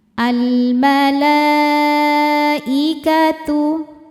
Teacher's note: Kemudian ada alif lam, namanya alif lam qamariyah. Karena alif lam berhadapan dengan huruf qamariyah yaitu mim, maka lam sukunnya dibaca jelas.